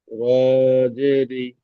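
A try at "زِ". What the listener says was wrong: র নই, যা। র নিচে নক্তা, উপরে নক্তা থাকে না। যা, যা, জের জি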